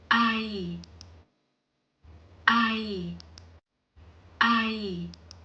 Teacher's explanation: It is pronounced with an Aa sound followed by a Y sound. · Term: Mai Malai